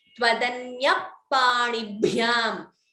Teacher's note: Visarga followed by Pa, that would be Upadhamaniya.